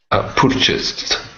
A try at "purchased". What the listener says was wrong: Okay, watch that oo sound at the beginning. So instead of saying purchased, it's purchased.